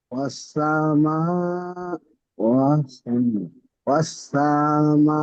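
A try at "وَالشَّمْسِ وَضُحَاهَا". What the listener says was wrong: ওয়াশ-শামসি ওয়াদুহাহা। ওয়াস ওয়াশ-শামসি ওয়াশ-শামসি ওয়াদুহাহা, তাড়াহুড়ো করবেন না। শিন, শিন যাওয়ার সা কি করে হলো? হা নেই, এখানে দুটো হা আছে।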